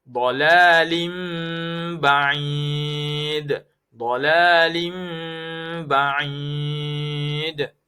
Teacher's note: Ada tanwin bertemu dengan ba. Huruf ba iklab. Ada tanda mim kecil. Iklab. Dibaca dengan dengung.